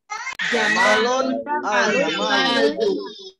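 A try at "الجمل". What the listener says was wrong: Coba diulang lagi, mimnya jangan panjang nanti.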